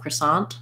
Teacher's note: if i'm saying a word with a t by itself croissant i might let that t release if i'm saying it in a sentence um or at the